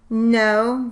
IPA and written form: noʊ (NO)